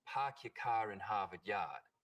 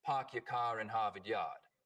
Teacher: call this the start vowel in Boston it's usually pretty fronted park your car in Harvard yard in Rhode Island it's back